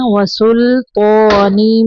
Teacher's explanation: لام کو کلکلا نہیں کرنا